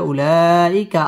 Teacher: মুত্তাসিল চার আলিফ টান দিয়ে পড়তে হবে